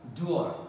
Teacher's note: from U, close position, half close position to the center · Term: centering diphthong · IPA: /ʊə/